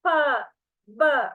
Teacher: Sounds in which the lips are in contact with each other are called bilabial.